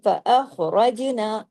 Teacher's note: रा जो है जबर के साथ है, रा हैवी पढ़ा जाएगा